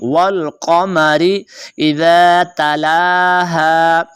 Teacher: لام کو آپ نے لمبا کرنا ہے کیونکہ لام کے اوپر کھڑا زبر ہے، یہ 1 حرکات کے برابر کھینچ کر پڑھا جاتا ہے۔